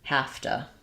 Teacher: It changes more to have to. So we reduce the to a t and that v changes to an f